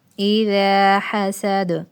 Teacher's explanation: آگے پھر زا نرم حروف میں سے آ رہی ہے، پھر الف ہے، الف سے پہلے زبر ہے تو الف مدہ اس لیے چھوٹا سا ایک الف لگایا ہے کہ ایک الف کے برابر لمبا کرنا ہے، پھر آگے سین، سین کی سیٹی، اور دال حروف قلقلہ میں سے قاف طا با جیم دال، دال، ٹھیک ہے، تو ساکن کریں گے تو ہلا کر پڑھیں گے